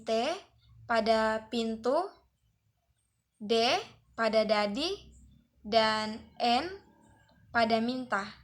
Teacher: ujung lidah atau apeks dan G i atau dentum atas caranya ujung lidah sebagai artikulator menyentuh gigi atas sebagai titik artikulasi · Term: bunyi apikodental